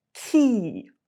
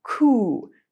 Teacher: E is more towards the middle of your mouth, and oo is further back. It's a little bit easier, a little bit more efficient to have your tongue already in position to say the vowel. · With ki, your tongue is hitting the roof of your mouth a little bit further forward on your hard palate. And with ku, your tongue is hitting a little bit further back. And that's because of the vowels.